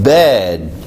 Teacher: 그래서 여기 있는 B는 유성음이어서 음이 낮다 그랬죠. D도 유성음이어서 음이 낮다 그랬어요.